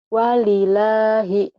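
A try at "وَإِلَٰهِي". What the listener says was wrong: Bukan walila. Ini nggak mungkin kalau dia sendiri. Ini alif. Wa ilahi gitu. La-nya benar, tapi ini la bukan walilahi ya. Wa ilahi.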